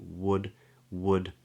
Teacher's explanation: the tip of the tongue comes up for a d